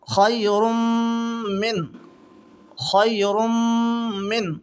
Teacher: دو پیش کی تنوین ہے را کے اوپر، اس کے بعد میں میم آ رہی ہے، ملا کر کے گنہ کے ساتھ پڑھیں گے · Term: ادغام مال گنہ